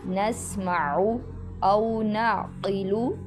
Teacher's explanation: قاف موٹا پڑھیں گے کیونکہ حروف مستعلیہ میں سے ہے